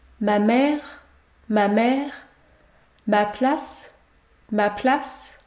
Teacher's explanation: dans les deux cas je ne prononce pas la lettre e à la fin il y a également un enchaînement vous allez devoir prononcer deux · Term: deux lettres muettes